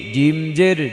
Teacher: জিব্বার মধ্যখান ওপরে লাগিয়ে জিম